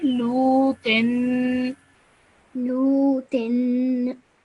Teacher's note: this is a vowel madda, so you stretch that lu sound out for 2 seconds. Then ta has a tanween underneath it, so it's nasal sound for 2 seconds.